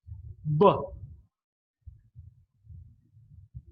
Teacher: it's a voiced sound because the vocal cords come in contact with each other can very close to each other they're loosely held together and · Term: voiced bilabial plosive